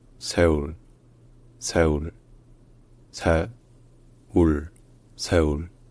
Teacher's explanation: le S est en quelque sorte suivi d'un H en même temps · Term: aspiré